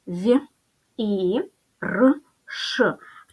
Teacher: перший звук в м'який тому що буква і пом'якшує попередній приголосний